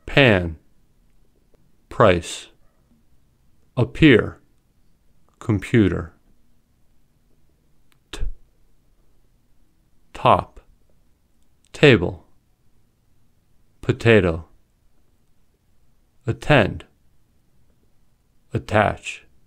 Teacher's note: they are pronounced with a small puff of air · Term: aspirated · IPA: /p/